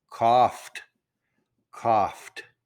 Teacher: The F sound is not a T. The F sound is not a D. It has to merge with the D with no vowel.